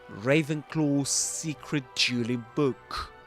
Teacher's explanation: instead of saying Ravenclaw secret, you know, pronouncing these separately, you can produce one long s sound